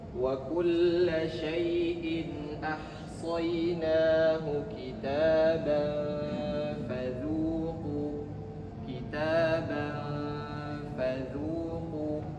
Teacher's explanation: Tanwin bertemu dengan huruf fa, maka hukumnya adalah ikhfa, harus disamarkan.